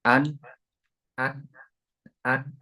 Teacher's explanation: huruf nun ini harus disertai dengan gunah di rongga hidung Nah karena mustahil mengucapkan huruf nun itu tanpa disertai dengan ee